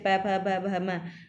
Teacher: ये सारे जब जो प फ वाली लाइन बोलते हैं तो सभी में होठ आपस में मिल रहे हैं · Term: ओष्ठ